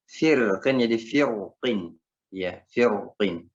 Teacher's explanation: Ya hanya qaf itu huruf isti'alah, maka ro-nya dibaca tebal.